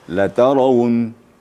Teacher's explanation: Ya, jangan sampai la-nya dipanjangkan. Jadi bukan setiap la panjang ya.